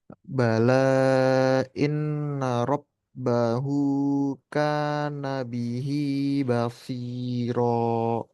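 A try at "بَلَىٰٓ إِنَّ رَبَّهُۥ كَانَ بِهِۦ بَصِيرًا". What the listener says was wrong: Bagus. Lamnya kurang panjang dikit lagi, Pak.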